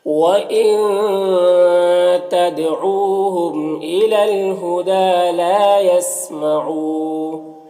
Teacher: تدعو دال میں قلقلہ ہو رہا ، او میں واو مدہ ہے، میم میں اظہار شفوی ہو · دال میں کھڑا زبر ہے، ایک الف کے برابر کھینچیں گے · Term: اخفا